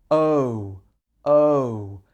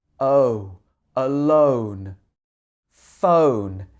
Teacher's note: So as you say this, your mouth goes from larger to smaller. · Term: O sound